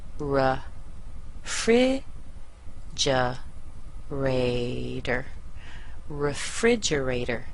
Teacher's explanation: the second sybl is the most stressed the first one is weak the third one is weak the fourth one is a little bit stronger